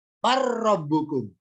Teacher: Lafat bal ketemu ro, pertemuan huruf lam dan ro, dibaca bar, lamnya dilewati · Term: idgham